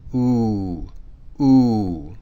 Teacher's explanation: that pronunciation is like the letter U in flute but with a low level tone